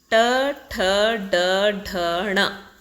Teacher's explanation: ನಾಲಿಗೆಯ ತುದಿ ಮೇಲಿನ ಅಂಗುಳನ್ನು ಸ್ಪರ್ಶಿಸ್ತಕ್ಕಂಥದ್ದು, ಅದಕ್ಕೆ ಮೂರ್ಧನ್ಯ ಅಂತ ಕರೀತಾರೆ